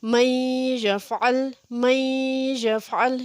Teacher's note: نون ساکن کے بعد یا حروف جر معلوم میں سے آ گیا ہے، اس لیے یہاں پہ ہم نے غنہ کرنا ہے